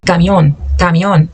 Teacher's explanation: Lembra que o mzinho não é nasalizado. Nem o M, nem o N, igual no português.